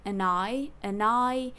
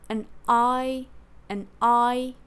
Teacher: she breaks it like say n and then say I separately like separating your voice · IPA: /ən 'aɪ | həv'hʌntɪd/